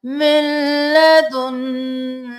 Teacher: लाम ज़बर ता लत ता ज़बर ता लत्ता ख ज़बर दा खज़ लत्तखज़नाहु मिन लदुन्ना मिन लदुन्ना नहीं करना। इस नून को छोड़कर मीम को लाम के साथ मिलाइए।